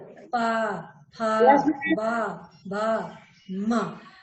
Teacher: ओठ हमारे आपस में टकरा रहे हैं ना। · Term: ओष्ठ